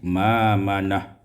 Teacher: ma'manah ibdalul hamzati alifan tukar hamzah alif